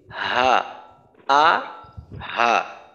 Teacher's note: এদের উচ্চারণের জায়গাটাই কিন্তু আলাদা। গোলহা যেটা, এর উচ্চারণ হলো হলকে শুরু থেকে, যেটা কিনা হামজা এর উচ্চারণটা, যেমন হামজা জবর আ, এই আ যেখান থেকে করি হা, আ হা।